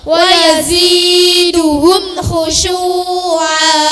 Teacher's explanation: mim yang mati dibaca dengan suara jelas dan terang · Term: idhar syafawi